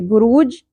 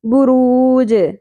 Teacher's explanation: جیم ساکن ہونے کی صورت میں قلقلہ ہوگا، باؤنسنگ ساؤنڈ ہوگی